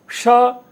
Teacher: श है उसका उच्चारण स्थान तालू है उसमें भी आप लिखेंगे श इति वर्णस उच्चारण स्थानम तालु वर्तते